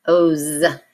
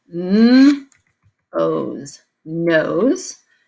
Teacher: spelled with an S but we're voicing that s